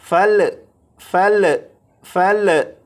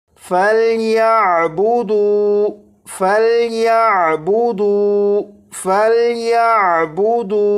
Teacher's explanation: یہ جو لام ہے اس لام پر قلقلہ نہیں کریں گے